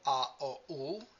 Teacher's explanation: a, o, u, are so-called back vowels. They are pronounced in the back of your throat. If you pronounce it now, a, o, u, and you locate the pronunciation, you know they happen in the back of the throat.